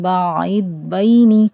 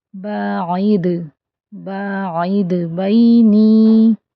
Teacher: دال پر جھٹکا لگے گا، یعنی آواز پلٹ کر آئے گی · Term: قلقلہ